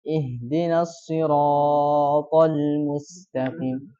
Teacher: Ra itu 2 harokat ya. Tapi dia panjang kan.